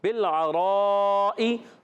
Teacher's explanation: با لام زیر، بل، لام کو ہلانا نہیں ہے، با کو لام سے ملائیں گے، بالعرائی، عین ادا ہوگا حلق کے درمیان والے حصے سے